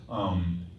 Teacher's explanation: And not only how she produces the sound, she's putting pressure on her vocal cords to get that kind of rasp, but she's also decided that Broodmother has a lateral lisp